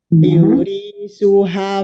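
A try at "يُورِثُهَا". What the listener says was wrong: Bun, nah lihat yu-nya, jangan cepat-cepat. Yu ada sukun ya. Yu banyak ya.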